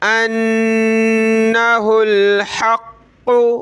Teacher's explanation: قاف کو ہم نے سخت کرنا ہے تشدید کی وجہ سے اور اس کو موٹا بھی کرنا ہے